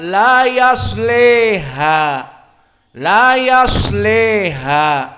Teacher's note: Maka Al-Kisai membaca la di sini dengan al-imalah al-kubra. Maka dibaca la yasleha.